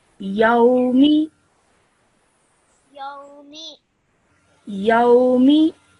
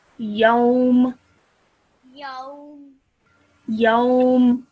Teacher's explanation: Okay, so the sound will stop at meme. Okay, so you will not pronounce the me. Okay, it will just be a m sound at the end